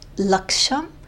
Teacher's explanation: This is a retroflex sha. Sha is in the front, and then sha is in the back.